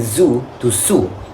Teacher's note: The z sound usually replaced by S